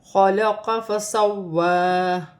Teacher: خا حروف حلقی میں سے ہے، حلق سے ادا ہوگا، اور یہاں پہ واو مشدد ہے، اسے جماؤ و سختی کے ساتھ 2 مرتبہ پڑھا جائے گا، اور کھڑی زبر بھی 1 الف کی مقدار کھینچ کر بھی پڑھا جائے گا۔